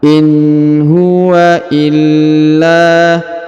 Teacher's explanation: In huwa nun sukun ya, in huwa illa. Huruf la ditahan dan ditekan lalu dipanjangkan 2 harokat ya.